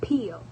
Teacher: The consonant sounds are p and l. The sound p is a bilabial stop or plosive because both lips come together to stop the airflow and then release it. The sound l is an alveolar lateral approximate.